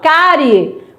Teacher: o i é fraquinho, o e é o forte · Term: semivogal